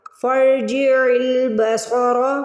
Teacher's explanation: صاد کی آواز نکالیں گے، سین کی نہیں. صاد کو موٹا پڑھیں گے